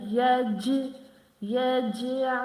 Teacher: I'm doing qalqala at jim, so jim is the qalqala letter.